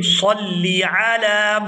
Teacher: صلی صاد کو لام مشدد کے ساتھ ملائیں گے